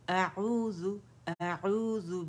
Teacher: अऊज़ु अऊज़ु, हमज़ा फतह आ है तो ये अक्सुल हलक से अदा होगा। आइन जो है हमारा वसतुल हलक से अदा होगा। ठीक है, अऊज़ु बिल्लाहि अऊज़ु अऊज़ु बिल्लाहि मिनश शैतानिर रजीम।